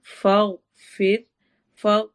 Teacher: کریں گے، فاغفر لنا لنا پہ اگین الف مدہ ہے، فاغفر فاغ میں غائن کو ہم نے موٹا کر کے پڑھنا ہے ، موٹے حروف میں سے ہے، پھر میں روا کو باریک